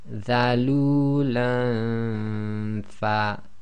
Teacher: so we have to effectively hide the noon sound because ikhfa is hiding, so we do the ghunna and we get ready for the next letter in the articulation point.